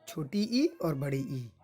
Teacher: तालु से उच्चारित होने वाला जो वर्ण है वो दोनों ई है